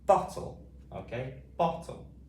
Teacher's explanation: we've got two consecutive same consonant sounds, just making one t sound. Okay, b-o-t-l, bottle.